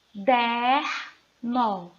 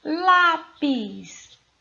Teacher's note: palavras paroxítonas a sílaba tônica é a penúltima